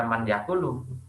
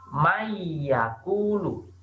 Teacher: Jadi mim di sini seakan-akan kalian langsung masuk membaca huruf ya. Nunnya seakan-akan melebur jadi mayakulu, bukan man yakulu, tapi mayakulu. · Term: Mendengung